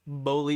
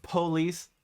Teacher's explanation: B uses the throat a little bit. Police is all just lips.